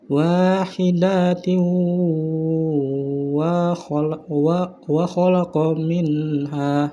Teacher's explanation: maka cara bacanya yaitu dengan dimasukkan menjadi satu dengan huruf sesudahnya atau ditasjidkan dengan mendengung. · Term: idgham bigunnah